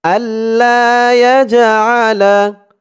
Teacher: এই জিমটা হচ্ছে কলকলার হরফ, ধাক্কা দিয়ে পড়তে হবে।